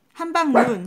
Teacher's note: 원래 말은 긴 소리인데 한국말 해서 짧은 소리로 됐어요.